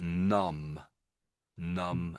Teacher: the B in the middle is the trick letter, and that's because it's silent, you don't say it